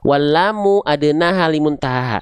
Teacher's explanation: Lam itu keluar dari samping lidah depan kanan, samping lidah depan kiri. Keduanya menyusur sampai ke ujung lidah. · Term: huruf lam